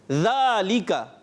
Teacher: زال کی ادائیگی صحیح رکھنی ہے، یہ زا سے تبدیل نہ ہو.